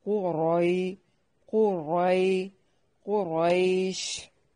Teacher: قاف کو موٹا ادا کرنا ہے، را کو موٹا ادا کرنا ہے